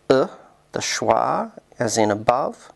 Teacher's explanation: as in above which is mid Central unrounded and LAX